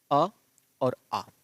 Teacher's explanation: अ और आ, ये किससे बोले जाते हैं, कंठ से बोले जाते हैं